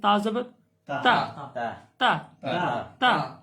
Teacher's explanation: زبان کی نوک اور اوپر کے دانتوں کی جڑ سے ادا ہوتا ہے. ٹھیک ہے، تو یہ زبان کی نوک اور اوپر کے دانتوں کی جڑ سے تا ادا ہوگا.